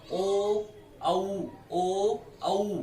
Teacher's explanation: ओष्ठ की स्थिति गोलाकार है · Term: वृत्ताकार